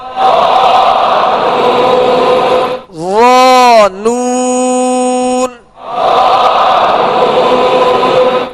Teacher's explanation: ظا کو نرمی کے ساتھ اور پر پڑھنا ہے